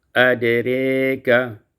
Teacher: dibaca imalah fathah ra dan alif